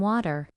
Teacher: in American English water often sounds like waiter because the t becomes a soft d